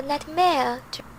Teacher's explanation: It's interesting that she puts the stress on mare, not nightmare.